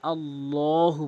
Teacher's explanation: আল্লাহু বলতে হবে। ল মুখটি গোল করে গোলাকার করে পুর করে।